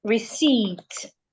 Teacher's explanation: The P should not be heard. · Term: silent P